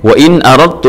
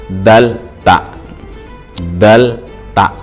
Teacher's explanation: idgham mutaqariban, berdekatan, sifatnya beda, makhrajnya sama ya